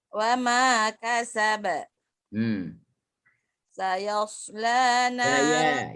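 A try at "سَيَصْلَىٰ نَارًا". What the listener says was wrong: Ya nipis lagi, sad baru tebal. Tak ada sengih lagi tu. Jangan sengih. Bukan sayasla, tak. Sayaslana.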